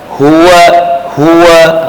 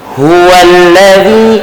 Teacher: Ada ha tu, dia ada hamsun, maka desiran angin tu dia ada.